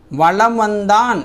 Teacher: ஒலிக்குது வளம் வந்தான் என்பதில் மகர மெய்யெழுத்து எழுத்தை அடுத்து வகர எழுத்து வர்றதால மகர மெய்யானது தனக்குரிய அரை மாத்திரை அளவிலிருந்து குறைந்து கால் மாத்திரை அளவுக்கு ஒலிக்குதுங்கிறாங்க நோட் பண்ணிக்கோங்க ஓகேங்களா அரை மாத்திரையிலிருந்து கால் மாத்திரையா மாறுது போலும் என்னும் சொல்லை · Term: மகர குறுக்கம்